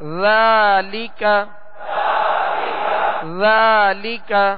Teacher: ذال کو نرمی کے ساتھ ادا کرنا ہے، اس میں بالکل سیٹی کی آواز پیدا نہ ہو. اور ذال پر کھڑا زبر ہے جو الف مدہ کے قائم مقام ہے، جسے ایک الف یعنی 2 حرکت کے برابر کھینچ کر ادا کریں گے.